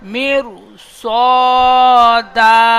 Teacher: র সাকিনের ডান দিকে জের এসেছে, র বারিক হয়, কিন্তু র সাকিনের পরের অক্ষরটি হরফে মুস্তালিয়ার 7টি অক্ষরের মধ্যে সদ এসেছে, তাই রকে বারিক হবে না, পুর করে পড়তে হবে